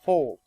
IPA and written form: fɔːlt (fault)